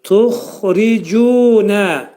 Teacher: Xa hərfi qalın hərfdir. Boğazın yuxarısından çıxarılacaq bu hərfin məxrəci. Necə dilimizdə xalit deyirik, xalit kəlməsində xı, ərəb dilində də bu xı hel olacaq.